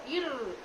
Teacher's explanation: வளைந்து நெளியும் ஆற்றல் உடைய நெகிழ்ந்த உறுப்புகளை வேகமாக ஆட விடுகின்ற போது எழுகின்ற ஒலிதான் ஆடொலி ர் நாக்கு அதிர்வதால் இருக்கின்றது ஆடொலியின் மற்றொரு வகை அடியோலி இதனை வருடொலி என்றும்